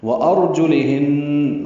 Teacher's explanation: ہن میں نون مشدد پہ غنہ ہے